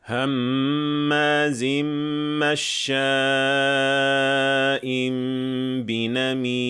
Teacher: I'll recite this med straight, without tarjih or any pitch control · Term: straight recitation